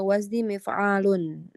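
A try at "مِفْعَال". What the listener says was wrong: Panjang ainnya. Ainnya panjang ya. Mif'alun.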